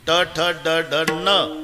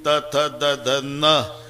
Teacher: ट ठ ड ड न दाताशी संबंध नाही, त थ द ध न दाताशिवाय उच्चार नाही. हे इथंच आहे, जवळ इतकंच अंतर आहे, एवढंच अंतर आहे.